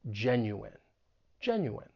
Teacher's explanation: The stress is on that first syllable. And just keep in mind that the I-N-E at the end of the word is pronounced in.